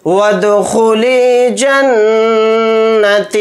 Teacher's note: नून के ऊपर तशदीद है तो नून के अंदर भी गुन्ना करेंगे। यहाँ पर ता या ज़ेर ती ही पढ़ा जाएगा हालत वक्फ में।